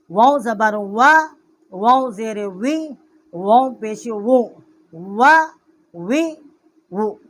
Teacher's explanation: واؤ کا مخرج جو ہے دونوں ہونٹوں کے نا تمام ملنے سے واؤ کا مخرج ہے